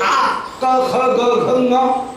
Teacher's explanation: गले में अवरुद्ध होकर के कंठ ध्वनि निकलेगी, जैसे आ क ख ग घ ङ इत्यादि जो ध्वनि है कंठ ध्वनि, वो कंठ के अवरोध के कारण वही जो तंत्रियों में झंकार उत्पन्न हुई वही कवर्ग होकर के या कंठ ध्वनि होकर के प्रकट होगी।